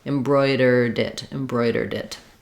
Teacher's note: the D kind of jumps here to the next word